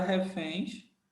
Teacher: Quem é a sílaba forte? A sílaba forte é o fém, fém. Então, é uma paroxítona terminada em ens.